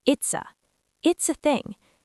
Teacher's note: Native speakers do not say it is a thing. We push it all together.